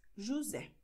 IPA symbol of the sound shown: z